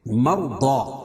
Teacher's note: رائے ساکنہ سے پہلے زبر یا پیش ہو تو را پور پڑھی جاتی ہے، اور ضاد کو پور پڑھیں گے، اور الف سے پہلے ضاد کے اوپر زبر ہے، اللہ الف مدہ ہوگا۔